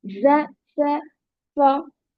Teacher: tip of the tongue, उसको हम touch करते हैं इनर एजेस से, लोअर इंसिजर्स के इनर एजेस से टच करते हैं